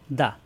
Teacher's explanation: জিহ্বার আগা উপরে দাঁতের গোড়ায় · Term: দাল